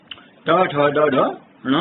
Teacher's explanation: ये वर्ण मूर्धा से बोले जाते हैं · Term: मूर्धन्य